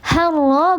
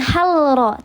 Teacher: Maka dibacanya dia dileburkan, tidak dijelaskan lamnya. Harro bukan halro, tapi harro. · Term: lam syamsiyah